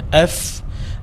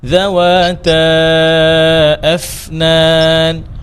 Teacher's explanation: ফা এর মধ্যে হামস আছে তো উপরের দাঁত নিচের ঠোঁট